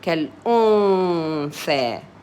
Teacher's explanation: noon, there's nothing on top, nothing down, so I omit it but leave a little bit of humming. كالأنثى, ثاء فتحة, ثاء.